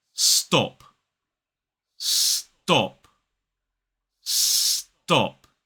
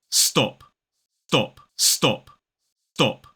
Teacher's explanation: word stop do stop do it sounds more like dop dop so when that unaspirated t sound comes after a s it sounds more like a d